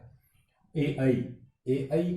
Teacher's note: ए ऐ कंठ तालव्य स्वर है, क्योंकि इसमें कंठ और तालु दो हिस्सों का योगदान होता है। एक तो कंठ और एक प्लस तालु।